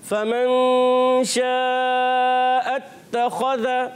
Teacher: फ़ा की अदायगी क्लियर रखनी है, फ़ा पर ज़बर है, बग़ैर खींचे अदा करेंगे